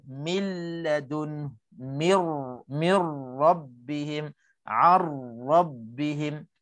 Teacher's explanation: Maka hukum 2 dalam 2 perkataan, maka hukumnya idgham bila ghunnah, bacaannya idgham tanpa dengung. Kita masuk tapi tak ada dengung walaupun 1 harakat. Ini nak kena pastikan, jangan ada saki-baki dengung sedikit pun.